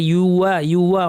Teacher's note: ওয়াও বলার সময় দাঁতের সাথে ঠোঁট লাগবে না।